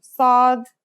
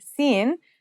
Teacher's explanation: it kind of sounds like the s in the word saw this sound is pronounced with your throat constricted